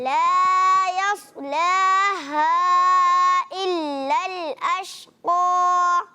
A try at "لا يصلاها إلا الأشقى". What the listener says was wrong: ماشاء اللہ اگر مد کو اور تھوڑا لمبا کریں تو اور اچھی بات ہے.